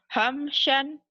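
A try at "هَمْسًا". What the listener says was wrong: Hamsan, sin kecil. Saya suka S.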